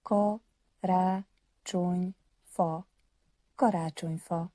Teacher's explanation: With the stress always on the first syllable and clear vowels.